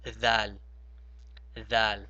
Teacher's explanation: you have to put your tongue in between your teeth, just like you would pronounce the tha. So you have dal, dal.